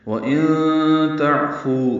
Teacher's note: نون ساکن کے بعد تا آنے کی وجہ سے اخفا ہے، عین ساکن پہ اظہار ہے.